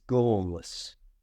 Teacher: To say this correctly, don't pronounce the R at all. Simply make the OR sound.